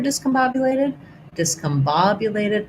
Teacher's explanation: main stress on bob. some secondary stress here because it's such a long word.